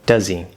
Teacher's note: slightly longer w does he z clearly this is a connection we're dropping the h connecting the z sound from does over to the e sound